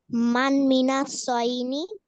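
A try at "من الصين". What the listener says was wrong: সয়নি না, সদের নিচে শেষ। মান মিনাস সিনি।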